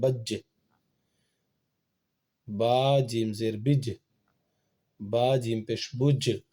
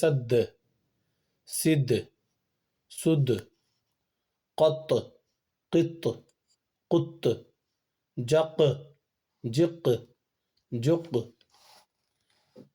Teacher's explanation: دال بھی حروف قلقلہ میں سے ہے، اس میں بھی قلقلہ ہوگا۔ قلقلہ کرنا اسی کو کہتے ہیں جو آواز ٹکرا کر کے آ رہی ہے واپس، اس کو قلقلہ کہتے ہیں۔